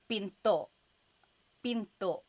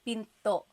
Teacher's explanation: Do you hear the glottal stop when I say pinto?